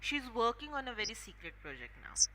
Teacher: Okay, now whenever we talk about normal statements, जे आपले positive statements असतात, the intonation that we follow is falling intonation. म्हणजे आपण हाय पिचनी start करतो आणि लो पिचला जातो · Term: falling intonation